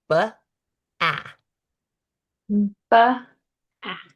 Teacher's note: So, we would label the first one as a voiced lip puffer B.